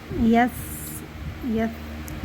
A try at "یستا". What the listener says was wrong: زبان باہر کیوں آ رہی ہے زبان باہر آئے گی تو سیٹی نہیں نکلے گی جس میں سیٹی چاہیے ہوتی ہے نا زبان منہ کے اندر ہاں زبان منہ کے اندر رہے گی